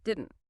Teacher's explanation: The final D and T sounds are often cut short or almost entirely omitted.